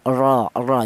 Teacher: huruf ro yang berharakat fathah itu dibaca tebal atau dibaca tafhim · Menggunakan lidah belakang diangkat ke atas